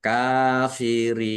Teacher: Ro kasrh ya sukun mad thobi'i. Tetapi karena bertemu dengan huruf terakhir yang dibaca sukun karena waqaf maka menjadi mad arid lisukun. Dibaca panjang boleh 6 4 atau dua harakat.